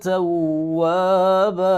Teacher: وقف کی صورت میں اس کو ایک الف کے برابر ایک الف پڑھیں گے اور زبر پڑھیں گے